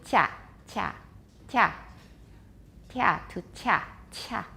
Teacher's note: You can hear some frication there, affrication. You can see that clearly on a spectrogram.